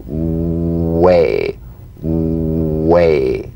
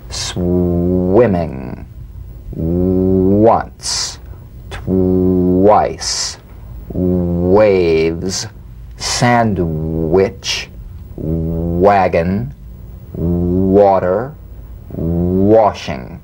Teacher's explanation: the W is a vowel like sound that begins where the number one vowel ends bring the lips to the smallest opening And precede the following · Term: the W labio consonant